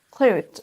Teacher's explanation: Là, on entend un petit peu le son TH plus le Z derrière.